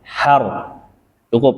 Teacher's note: sifat takrir atau getaran yang ada pada huruf ro adalah getaran yang lembut, tuh diulang 2 kali.